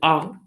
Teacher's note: संवृत अर्थात जो पूरा क्लोज रहेगा, मुख द्वार पूरा बंद रहेगा तो संवृत रहेगा, और पूरा खुला रहेगा तो विवृत रहेगा। तो आ अगर उच्चारण करते हैं तो पूरा खुला रहता है, ओपन, फुल ओपन रहता है, तो इसीलिए आ जो है इसके अंतर्गत आएंगे।